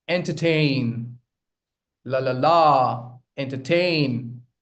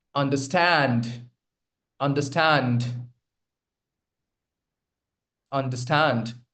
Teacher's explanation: three syllable words where the stress lies on the third syllable